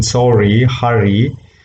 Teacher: the articulators are brought together closer, and it taps there more than one time, one or two times. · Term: trill or roll